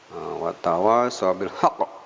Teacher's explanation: hak ini kalau berhenti menjadi qalqalah sugro